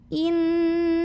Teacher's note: alif lam tidak perlu dibaca atau kita idghamkan, kita masukkan langsung ke lam yang berikutnya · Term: alif lam syamsiyah